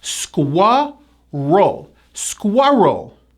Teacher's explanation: there's a strong hidden W sound in this word and also a very strong R. 2 syllables.